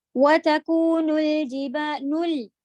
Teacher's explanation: نو کے لیے ہوٹ گول تھے، لام کے لیے سیدھے